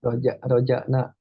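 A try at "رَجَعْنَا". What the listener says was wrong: Roja'ana. Roja'ana. Ainnya jelaskan lagi. Jangan roja'na. Jangan. Kalau roja'na berarti itu hamzah. Sedangkan ini pakai ain. roja'ana. Roja'ana. Diapain ke ainnya lagi ya, akhi ya. Jangan kesannya nanti ke hamzah. Karena ke hamzah jadi beda-beda artinya.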